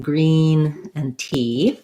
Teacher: the resonance happens in the front of my mouth and my tongue is up high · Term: high front vowel